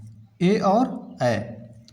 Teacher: कंठ तालव्य वर्ण में केवल 2 वर्ण आते हैं, ए और ऐ, जो कंठ, तालु और जिह्वा से निकलते हैं।